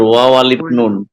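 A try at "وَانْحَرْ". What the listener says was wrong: না, এখানে আলিফ পড়া লাগবে না, চাইলে পড়তেও পারেন, যেহেতু আলিফ সাথে লাম নাই, পড়তেও পারেন, তবে পড়া না পড়া সমান।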